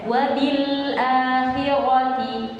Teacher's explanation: Huruf lam kan punya sifat al-bainiyah, yang mana durasinya tidak terlalu panjang dan tidak terlalu pendek.